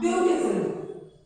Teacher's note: So I have 3 syllables here where the first syllable is stressed.